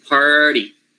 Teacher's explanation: the first syllable totally complete, par, and then the second syllable should have the flap plus the vowel